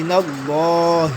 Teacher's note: ہاں حرف حلقی میں سے ہے اور اس کا مخرج جو ہے انتہائے حلق ہے، لہٰذا یہ حلق سے ادا ہوگی